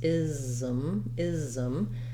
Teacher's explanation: We have the voiced Z sound for the letter S, ism, ism. You might even have a little bit of a schwa sound in there, ism.